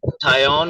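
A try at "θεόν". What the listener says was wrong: ये फिर आप गलत, इसको थायोन नहीं बोलना, थेओन।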